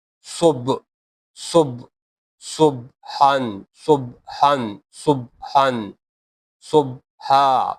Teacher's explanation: Ba is qalqala letter. Here the sound bounce.